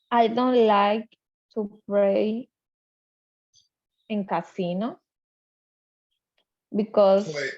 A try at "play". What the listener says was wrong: It sounded like you said pray.